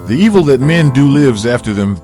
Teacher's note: the falling intonation on them concludes the thought